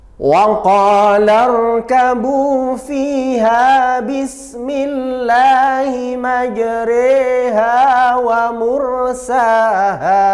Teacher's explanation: bacaan imalah, artinya memiringkan harokat fathah pada kasroh